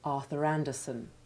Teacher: what would have been a very weak r at the end of arthur by itself recovers strength from the strong sounded vowel at the beginning of the next word